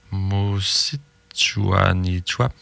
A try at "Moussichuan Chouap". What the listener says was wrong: oui tu l'as là Moussichuan Chouap. Oui, les i se prononcent pas. Moussichuan Chouap.